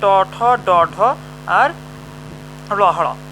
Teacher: তাহলে আমাদের ট বর্গগুলো উচ্চারিত হয় মূর্ধ থেকে। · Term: মূর্ধন্য